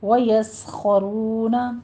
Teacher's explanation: وَيَسْخَرُونَ میں بھی سین کو آپ نے سیٹی کی آواز نکالنی ہے اور باریک رکھنا ہے، خو کو پر کرنا ہے، ویوس نہیں کہنا، وَيَسْخَرُونَ خو بھی پر ہے، رو بھی پر ہے، آگے واو مد ادا کرنی ہے